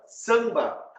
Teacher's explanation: O som do A, ele vai vir junto com o som do M.